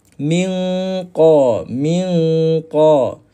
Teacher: pangkal lidah kita akan naik dengan dan dia akan bersentuhan dengan langit lembut atas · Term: huruf qaf